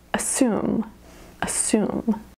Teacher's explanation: you almost don't even hear that first syllable